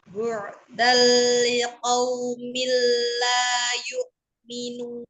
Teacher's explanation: Ada fathah tanwin ketemu dengan lam itu dibaca idgham bila gunah sehingga dibacanya melebur. · kasroh tanwin bertemu dengan lam, sehingga tanwinnya tidak dibaca, sehingga langsung dibaca ke lamnya atau dilebur ke lam